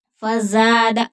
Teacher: زا زا کی باریک سیٹی نکلے گی. فزاد زا جو ہے وہ ایک الف کی مقدار کے برابر کھینچ کر پڑھیں گے.